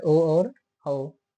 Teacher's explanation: इनका उच्चारण स्थान कंठ और ओष्ठ से होता है।